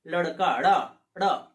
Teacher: जैसे बोलता है आदमी लड़का ड़, मतलब जीभ जो है ना तालु को स्पर्श करती है और एक झटके से नीचे आ जाती है, मतलब पता नहीं कितना जल्दी स्पर्श की और वो वापस आ गई। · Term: उच्छिप्त